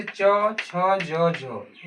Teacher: छ भी बोलेंगे तो देखेंगे अपना जीभ कहां सट रहा है तो मेरा जीभ ऊपर तालू में सट रहा है